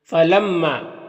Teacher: یہاں پر میم مشدد ہے تو غنہ ہوگا، اس کی آواز کو ناک میں لے جا کر گنگنائیں گے ایک الف کی مقدار، اور یہاں پر الف سے پہلے میم کو پر زبر ہے تو الف مدہ ہوگا، اسے ایک الف کے برابر کھینچ کر پڑھتے ہیں۔